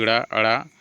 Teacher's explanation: व्यंजनों के उच्चारण में जीहा की उल्टी हुई नोक जो है तालू को छूकर झटके से हट जाती है उन्हें उत्क्षिप्त व्यंजन कहते हैं जैसे कि ड़ अड़ उत्क्षिप्त व्यंजन